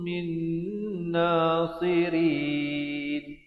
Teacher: Min, di sini hukumnya wajibul gunnah, wajib dengung 2 harakat